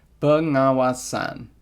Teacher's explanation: the S there blocks the spread of vowel nasalization in the last word, the word for supervision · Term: nasal harmony